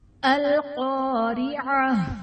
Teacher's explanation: قاف حرف مستعلیہ پر پڑھا جائے گا، الف سے پہلے زبر ہے، الف مدہ کا قاعدہ ہے، را کے نیچے زیر ہے، را کو باریک پڑھا جائے گا۔